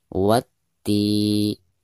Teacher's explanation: Jadi, dari bacaan 'wa', Anda langsung menuju 'ti', yang ditekankan langsung dengan tashdid. · Baik, yang pertama kita bahas alif lam yang ada di sini, yaitu dihukumi alif lam syamsiyah karena ada alif lam lalu berhadapan dengan salah satu huruf syamsiyah, di sini huruf ta. Maka alif lam tersebut tidak dianggap atau tidak dibaca ya, karena tidak ada tanda sukun di atasnya. Jadi dari bacaan wa langsung ke ti ya, langsung ditasydidkan